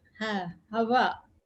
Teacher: you will feel the vocal cords are open inside